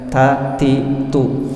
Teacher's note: Jadi ada hembusan anginnya dan ringan aja.